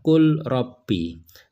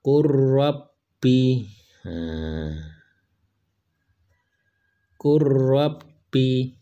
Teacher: Jadi lamnya dimasukkan ke dalam huruf ro. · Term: idgham mutajanisain